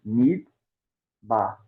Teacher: não tem um e a gente para só na consoante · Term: Chev mudo